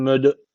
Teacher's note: D harfi cezim almış. Kalkale tecviti var. Birazcık vurguluyoruz.